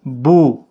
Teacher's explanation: واو کے پچھلے حرف کے اوپر جب پیش ہوتا ہے، جیسے با واو پیش بو، تو واو مدہ بنتا ہے، ایک الف کی مقدار کے برابر کھینچ کر پڑھتے ہیں